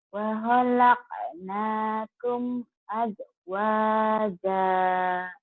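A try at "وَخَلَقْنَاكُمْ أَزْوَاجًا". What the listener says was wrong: Wa khalaqnakum azwaja. Kurangnya kurang kol-kolah saja.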